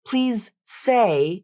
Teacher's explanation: the voicing of the first consonant the Z in this example causing Z to drop most or all of its voicing to become more similar to S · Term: voicing assimilation